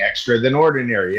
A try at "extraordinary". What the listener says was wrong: No, not then ordinary. It's extraordinary.